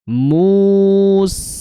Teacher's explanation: Slow motion-nya mus ditarik seperti itu tipis ya. Karena sin dia karakternya tipis kemudian dia ringan ya lemah.